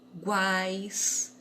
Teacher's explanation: na pontinha ficam duas vogais que têm um som mais fraco e no meio uma com um som mais forte. E elas estão sempre na mesma sílaba, também não se separam. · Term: tritongo